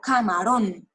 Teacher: camarón tiene el acento en la última sílaba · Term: agudas